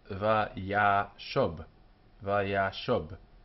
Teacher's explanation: The accent has moved from its natural place to earlier on in the word